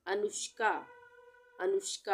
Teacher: अनुष्का में आधा मूर्धन्य श आएगा। ये पूरा होता है ना, इस तरह से प बना के पेट चीर देते हैं उसको, तो उसको हम बोलते हैं मूर्धन्य श।